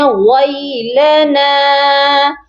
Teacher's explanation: نون کے ساتھ الف مدہ ہے، اس کو بھی ایک الف کی مقدار لمبا کریں گے